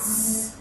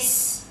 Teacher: When I put my hand on my throat and pronounce the sound Z, there is vibration in the vocal cords. So it is voice sound.